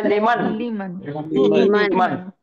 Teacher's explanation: اور یہ دیکھو لمن، لام کے نیچے زیر ہے، لام زیر لی، لام زیر لے نہیں پڑھیں گے، لام زیر لی، میم زبر ما، نون ساکن لیمن.